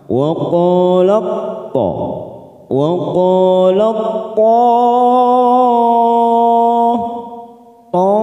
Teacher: bertemunya dua huruf sama makhrajnya beda sifatnya maka cara membacanya langsung masuk pada huruf th kita tekan tanpa lama-lama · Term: idgham mutajanisain